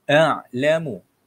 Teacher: Hamzah juga keluarkan bunyi ha, hamzah itu daripada dada.